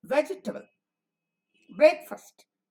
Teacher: both loudness and duration we are shortening the unaccented syllable